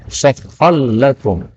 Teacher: Jadi ra-nya menjadi lam. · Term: idgham